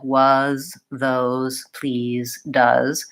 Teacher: the letters s e most of the time it will stick it will say a Z sound rather than an S sound